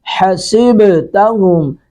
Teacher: سین پر سیٹی کی آواز آئے گی